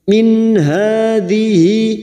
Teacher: nun sukun dibaca jelas tanpa mendengung. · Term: idhar halki